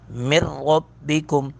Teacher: نون ساکن کے بعد را آ رہی ہے، یہاں پہ ادغام بلا غنہ ہوگا